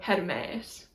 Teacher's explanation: a rise in pitch and a fall in pitch on the same letter, but basically you can just treat it as where the stress is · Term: circumflex accent